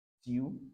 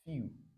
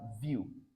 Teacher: after the first consonant, the next one is y sound plus u that is long